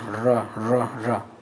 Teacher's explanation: आप र बोल के देखिए, आपका जीभ थोड़ा मुड़ जाता है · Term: लुंठित